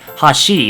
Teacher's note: In contrast, when you say the word hashi and you intend to mean bridge, you might sound more like hashi, because it goes from a low pitch accent to a high pitch accent